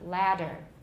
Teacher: With a real D, we will lengthen the A.